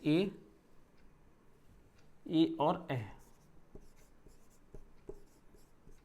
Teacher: कंठ से और तालु दोनों, इसमें दोनों की सहभागिता होती है तब ए का उच्चारण होता है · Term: कंठ तालव्य वर्ण